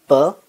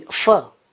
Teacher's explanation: the vocal organs interfere with the airstream and we have either complete closure as in per or a narrowing as in fur